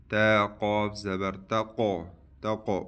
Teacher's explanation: student اس قاف میں قلقلہ ہوگا